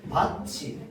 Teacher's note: 티귿과 이가 만나서 어떻게 발음됩니까? 치읒으로 발음됩니다